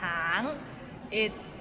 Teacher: It's It means orange, but some people might find it difficult because the end has a little ng so it's a a bit of nasal sound